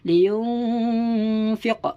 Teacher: Harus dibaca dengung serta samar.